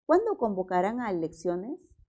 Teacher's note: con la B cuando convocarán a elecciones es una pregunta pero está encabezada con un pronombre Entonces siempre va a ser pregunta el tono es descendente